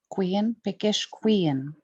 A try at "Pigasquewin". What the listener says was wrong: no, win, W-I-N. Pigasquewin.